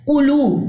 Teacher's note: تو قاف کے لیے آپ کی اقصی لسان خوب اٹھنی چاہیے. قلو میں لو لمبا ہوگا، کیوں؟ کیونکہ اس کے ساتھ واو جزم جڑا ہوا ہے · وقالو میں الف سے پہلے زبر ہے، یہاں پہ ہمارے پاس الف مد کا رول ہے اور واؤ کو ہم نے لمبا نہیں کرنا کیونکہ واؤ کے پاس جو ہے وہ زبر موجود ہے. پھر واؤ خالی ما قبل پیش، اس کو ہم لمبا کریں گے کیونکہ یہاں پہ واؤ مد کا قاعدہ ہے. قلو، قاف کو آپ نے موٹا ادا کرنا ہے کیونکہ یہ اقصی لسان یعنی کہ جو زبان کی جڑ ہے وہاں سے تعلق کے نرم حصے کے ساتھ جب زبان کی جڑ لگتی ہے تو قاف ادا ہوتا ہے.